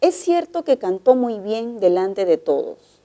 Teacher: la oración es enunciativa y el tono final es descendente